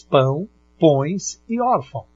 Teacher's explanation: pelo nariz porque não tem como você não fala pelo nariz você fala parte pela boca e uma parte vai para o nariz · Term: ditongo nasal